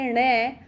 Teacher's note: ण का उच्चारण स्थान जो हो जाता है वो मूर्धा, इसके बाद नासिका भी है।